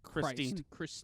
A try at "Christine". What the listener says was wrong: Not Christ.